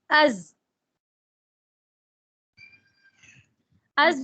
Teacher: اس کی اپنی ایک علیحدہ صفت ہے سیٹی والی، وہ ہمس میں نہیں آئے گی کیونکہ وہ بہت بلند آواز ہے